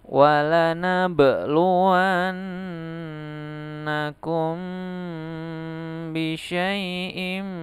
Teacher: syafawi ikhfa artinya menyamarkan atau menyembunyikan syafawi artinya bibir hukum apa cara membacanya harus disuarakan samar-samar bibir dan didengungkan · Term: Ikhfa Syafawi